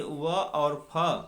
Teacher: दंतोष्ठ से व और फ बोले जाते हैं